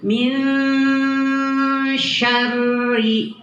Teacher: ro-nya tartik tipis karena ro-nya di kasroh. Di kasroh itu tarkik ya, tipis.